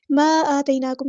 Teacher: मद मुनफ़सिल है, इसको 2 या 4 काउंट हम इसको लंबा करेंगे। अब इसको कैसे हमें पता चला क्योंकि यहाँ पे मद है और अगले कलमे में हमज़ा है, हमज़ा अलिफ की शक्ल में है।